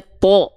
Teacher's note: Huruf to ketika dia berharokat fathah, dia kan dibacanya to. Ya, terdengar seperti vokal o, tidak ta